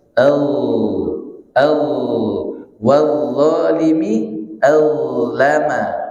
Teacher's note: Dha. Nah, huruf dha hurufnya tidak ada udara yang mengalir, tapi suaranya ngalir